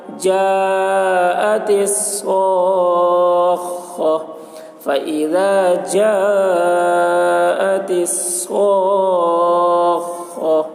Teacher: مد متصل کو 3 یا 4 الف کے برابر کھینچ کر پڑھیں گے۔ صاخہ، حرف مد کے بعد والے حرف پر تشدید ہے، اس لیے مد لازم کلمی مثقل ہوا۔